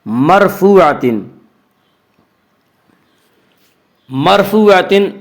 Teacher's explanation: اس کا قاعدہ یہ ہے کہ را ساکن سے پہلے اگر زبر اور پیش آئے تو را ساکن کو پر پڑھیں گے، را ساکن سے پہلے زیر آئے تو را ساکن کو باریک پڑھیں گے، یا را ساکن سے پہلے میم کے اوپر زبر ہے اس لیے را ساکن کو پر پڑھیں گے۔